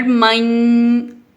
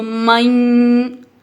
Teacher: نون کو ہم ناک میں لے گئے ہیں اور میم کو ہم نے یا کے ساتھ ملا دیا۔ ادغام کا مطلب ہوتا ہے ملانا، تو یہاں پہ میم کو ہم نے یا کے ساتھ ملا دیا اور نون کو ہم ناک میں لے گئے، یعنی ہم نے نون کا غنہ کر دیا ہے۔